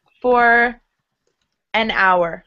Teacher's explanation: For an hour, because H is silent in hour.